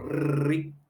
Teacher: री ऋषि का बोलते समय तालू से थोड़ा सा पीछे खिसकते हैं हम, री, है ना, तो री ऋषि का मूर्धा में चला गया।